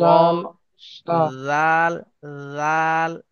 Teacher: জালটা উচ্চারণ করার সময় জীবের আগা এবং উপরে সামনের দাঁতের আগার সঙ্গে লাগাবেন হালকা করে